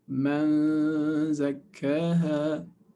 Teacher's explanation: So remember, for Nun Sakina, Ikhfa with Nun Sakina, you're actually pronouncing and anticipating the next letter. So man, you say man, and then your mouth is in the position of zay. Man zakkaha with two ghunna harakat. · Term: Ikhfa of Nun Sakin